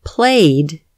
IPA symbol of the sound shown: d